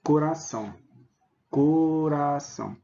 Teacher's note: um ditongo nasal parte do ar sai pela boca e parte do ar sai pelo nariz